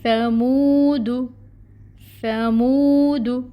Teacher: یہاں پر واو مد کا رول ہو رہا ہے، 2 کاؤنٹس لمبا منہ کو کھینچیں گے